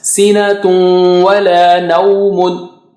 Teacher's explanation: So you have to do Ghunna, meaning you have to take the sound out from the nose and stretch it twice.